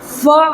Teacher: الف مدہ کو 1 الف کے برابر کھینچ کر کے پڑھیں گے اور 1 الف کی مقدار یعنی 1 سیکنڈ کھینچ کر کے پڑھیں گے